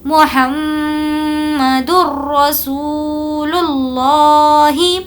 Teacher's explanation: تنوین یا نون ساکن کے بعد اگر را اور لام آئے تو بغیر غنے کے پڑھیں گے، اس لیے یہاں پر ہم نے کوئی غنہ نہیں کیا · میم پر ہم نے غنہ کیا کیونکہ ہمیں پتا ہے کہ میم پر اگر تشدید ہو تو غنہ ہوگا